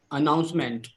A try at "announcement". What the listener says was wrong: Announcement. So don't put too much emphasis on OU. You are doing announcement. Don't put too much of emphasis here. Announcement. Okay, so pay attention on the syllables like A, OU, E, and E. These are the syllables here.